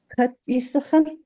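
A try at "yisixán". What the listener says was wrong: Chat yisachan. Yeah, we're going to keep that vowel short.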